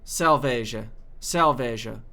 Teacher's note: when it's plural is like a sh sh sound but also the r sound is more of a uh a slight H it's not very forced at all